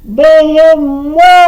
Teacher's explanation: наголос падає на останній склад